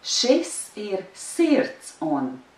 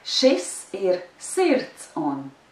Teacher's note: The first word is stressed and the third word is stressed. The second word and the fourth word are not stressed.